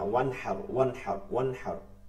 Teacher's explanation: পরের হরফটা তাকান, বামের হরফ হামজা হা আইন হা, আছে না আইন হা, এইটা হওয়ার কারণে আর নুন সাকিন গুণ হবে না